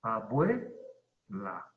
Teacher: En este caso no es un hiato, es un diptongo, porque se pronuncia en una sola sílaba. · La palabra abuela es una palabra grave porque lleva el acento en la penúltima sílaba